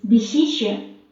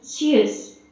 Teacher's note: The tip of the tongue is close to the back part of the alveolar ridge, forming a flat narrowing.